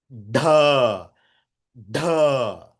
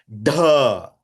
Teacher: Cerebrals. The fourth word in the cerebrals. So that is a Mahaprana Shabdam. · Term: Murdhanya Shabdam